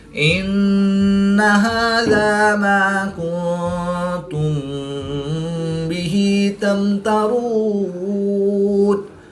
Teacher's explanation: الف سے پہلے میم پر زبر ہے تو الف مدہ کو ایک الف یعنی 2 حرکات کے برابر کھینچ کر پڑھیں گے. نون ساکن کے بعد تا حروف اخفا میں سے ہے تو یہاں پر اخفا ہوگا یعنی غنہ زمانی کر کے پڑھیں گے. میم ساکن کے بعد حرف با ہے تو یہاں پر اخفاء شفوی ہوگا. · میم ساکن کے بعد حرف با اور میم کے علاوہ حرف تا ہے تو یہاں پر اظہار شفوی ہوگا. غنہ نہیں کریں گے بلکہ میم ساکن کو ظاہر کر کے پڑھیں گے.